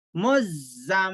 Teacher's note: मीम जेर मी, मुज़्ज़म्मी, नून और मीम पर तशदीद हो तो गुन्ना करके नाक में आवाज को रोक के पढ़ते